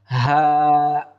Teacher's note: একেবারে হলকের শুরু থেকে উচ্চারিত হবে